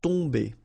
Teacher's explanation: You don't pronounce the M at all, so it's really a nasal, so it goes in your nose.